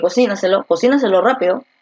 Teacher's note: Entonces la fuerza de voz está aquí, en la trasantepenúltima. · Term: sobreesdrújula